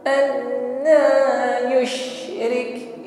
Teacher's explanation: ditekan sekali saja la gunna, tidak ada dengungnya. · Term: idgham bila guna